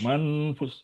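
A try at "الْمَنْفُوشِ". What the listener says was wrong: Manfush. Nah, ini sya, ujungnya sya, bukan sa ya. Fush. Fush. Sh.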